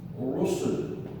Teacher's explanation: Ra has dhamma, so it is pronounced thick.